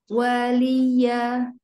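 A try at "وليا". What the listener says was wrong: Jangan ada tasdid. Waliya, enggak. Waliya.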